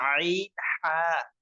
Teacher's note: দুই নম্বর মাখরাজ হলকের মধ্যখান হইতে